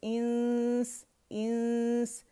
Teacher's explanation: سین کے مخرج کے ہم رائٹ اوے قریب جاتے ہیں, لیکن نون کو چھپاتے ہوئے اور غنہ ریٹین کرتے ہوئے, اور سین کو ٹچ نہیں کرتے جب تک ہمارے پاس کاملہ گریڈ کا غنہ ادا نہ ہو جائے.